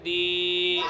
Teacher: یا مدہ کو ایک الف کے برابر کھینچ کر پڑھیں گے